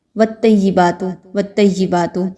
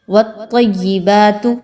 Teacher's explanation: تا کی طرح طوا کو پڑھ رہے ہوتے ہیں، جبکہ طوا کو ہم نے خوب موٹا پڑھنا ہوتا ہے